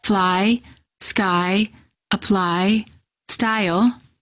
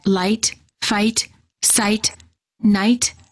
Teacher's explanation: The tongue is relaxed, and it moves from a flat to high position.